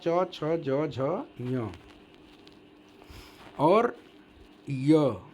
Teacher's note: च छ ज झ ञ और य तालु से उच्चारण इसका होता है